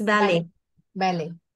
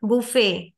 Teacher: in French word final T is silent